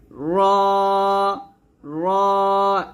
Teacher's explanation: জিহ্বার আগার উল্টা পিঠ উপরের তালুর সঙ্গে লাগিয়ে মোটা করে র উচ্চারণ করতে হবে